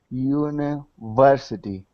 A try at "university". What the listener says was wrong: Much better.